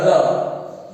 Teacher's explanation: जैसा इसका प्रकार का नाम है प्रकंपित, तो इसमें उच्चारण करते समय जिह्वा 2-3 बार कंपन करती है। और हिंदी वर्णमाला में र ऐसा व्यंजन है जिसके उच्चारण में जीभ 2-3 बार कंपन करती है